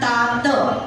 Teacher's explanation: हा तात मधला जो त आहे तो दंत्य वर्ण आहे यामध्ये जीभ दाताला चिटकलेली असते मागच्या बाजूने